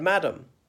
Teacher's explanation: you emphasize the first syllable not the second mad um and the second a comes out like EU madam